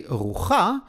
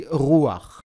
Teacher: The letter chet, when it appears at the end of a word, together with the vowel patach, does not sound as cha, but rather as ach. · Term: the sound of ach